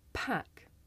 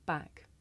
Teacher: Did you see the piece of paper moving? The big puff of air forces the paper to move, and you can feel that with your hand.